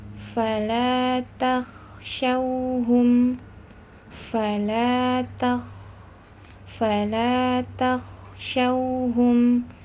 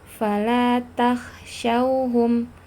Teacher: harus jelas hamesnya rakhwahnya udara dan nafas harus mengalir kemudian harus jelas sifat istilanya bahwa menandakan bahwa huruf k itu